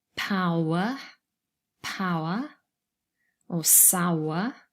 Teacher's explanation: there's one syllable with a diphthong and then there's a second syllable with a schwa · there are some people who pronounce these words over two syllables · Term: syllable boundary